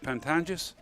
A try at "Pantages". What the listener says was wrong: My handwritten notes, Pantages. There's no second N there, although my suspicion tells me there should be.